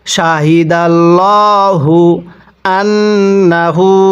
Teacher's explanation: এই নুনের মধ্যে গুন্নাহ করব, কারণ মিমে নুনে তাজদিদ হলে সেখানে গুন্নাহ করা ওয়াজিব হয়